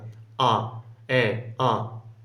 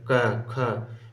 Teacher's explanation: बिल्कुल अंदर से आवाज आती है मतलब गले से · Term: कंठ